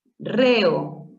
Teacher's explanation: Vocal abierta E con vocal abierta O, se separa siempre. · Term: hiato simple